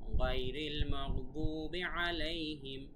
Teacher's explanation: তারপরে গায়রিল মাগদুবি আলাইহিম, গাইনের উচ্চারণ গলার ভেতর থেকে, মাগদুবি আলাইহিম, আইন গলার ভেতর থেকে, ওয়ালাদ, এই যে দ, এখানে 4 আলিফ টান হবে।